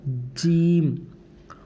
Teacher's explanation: वस्त जबान उसके मुकाबिल ऊपर का तालू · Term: जीम का मखर